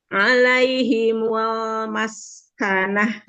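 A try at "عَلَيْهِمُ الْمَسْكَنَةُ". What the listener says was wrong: Mul lebar. Mul maskanah. Ya, mul buka. Depannya giginya buka. Gigi atas, gigi bawahnya agak dijauhkan gitu. Mul maskanah. Jadi lebar lamnya, terus jangan ngegumpel di dalam. Jadi dibuka, kasih celah biar inhirop bainiahnya keluar ya, terdengar.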